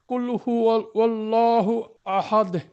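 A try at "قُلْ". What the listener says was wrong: কুলটা আরো একটু বড় করেন ভাই, কুলটা আরো একটু বড় করে উচ্চারণ করেন, কুল। বাকি কুলটা আর একটু খেয়াল করবেন, যাতে কফটা একদম দুই নুক্তাওয়ালা কফ আর একটু পরিষ্কার করার চেষ্টা করেন।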